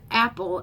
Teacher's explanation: the word apple is a trochee stressed unstressed